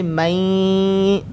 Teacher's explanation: तो यहाँ पर हम गुन्ना करेंगे कैसे, मई, थोड़ी सी नून की आवाज़ इसके अंदर आ रही है, मई, नाक के अंदर आवाज़ आ रही है, ऐसे लग रहा है कि नून की आवाज़ है